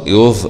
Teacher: مراعاة مخرج الظاء طرف اللسان مع أطراف الثنايا العليا، مع تغليظ الظاء